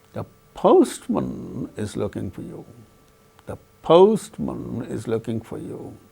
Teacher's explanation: So, the tonic syllable is to be uttered with falling tone.